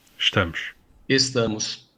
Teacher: In this word, you can hear the difference in the S sounds, sh in European Portuguese and s in Brazilian Portuguese.